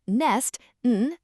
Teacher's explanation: They all start with our humming n sound.